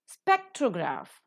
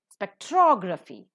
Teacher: Spectrograph, the first syllable is accented. Spectrography, the second syllable is accented.